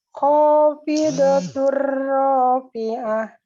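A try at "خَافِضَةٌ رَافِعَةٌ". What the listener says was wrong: Iya, rohnya tebal ya. Ya, khafidatur, jangan tur, tidak tur, tapi tur sekali aja. Getarnya sekali, purwa ya. Khafidatur rafi'ah.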